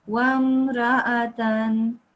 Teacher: I think you did that because there's an alif right next to it, but actually the alif is not there to prolong this ra. It's there as its own sort of letter.